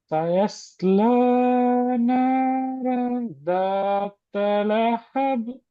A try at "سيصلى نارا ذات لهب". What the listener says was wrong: ரெண்டு பிழைக்குது. ذات لهب. கலக்கணும். ذات لهب.